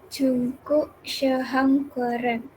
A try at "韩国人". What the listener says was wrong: Han, bukan Hang. Han, pakai N. Hankuoren.